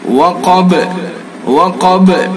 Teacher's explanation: غا، غین کو بھی پر، الف کو بھی پر، قاف کو بھی پر، اور یہ وقب، قاف کو بھی پر، اور با کے اندر قلقلہ کریں گے